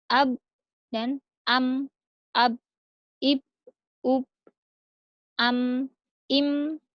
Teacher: Selanjutnya, 2 bibir tertutup, 2 huruf, yaitu ba dan mim.